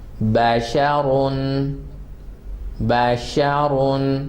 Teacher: باشا are sharp and رون, رون is full mouth in this word